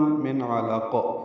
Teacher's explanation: قاف ساکن پہ قلقلہ ہوگا